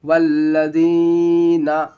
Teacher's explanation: یا ساکن سے پہلے زیر آتا ہے تو یا مدہ ہوتا ہے، ایک الف کے برابر کھینچنا ہے اس کو